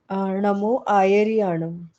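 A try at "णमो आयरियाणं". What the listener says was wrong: आड़म नहीं, याड़म। नमो आयरी याड़म। हाँ, नमो आयरी याड़म, है ना, तो या आता है, नमो आयरी याड़म।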